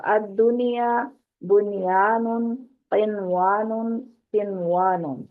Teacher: clear کر کے پڑھنا، غنہ نہیں کیا جائے گا